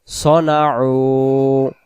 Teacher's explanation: সনাউ আইন অক্ষর, গলাটা একটু চাপ দিয়ে পড়বো